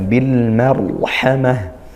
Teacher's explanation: Al bertemu huruf mim maka dia dibaca izhar ya Kalau tadi lamnya tidak terbaca Nah kalau izhar itu barulah